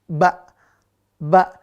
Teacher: Kalau kita lihat, maka dia tidak ada udara. Atau tidak berhembus udara. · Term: huruf ba